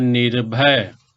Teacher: यहाँ निह का जो विसर्ग है ये र हलंत में बदल गया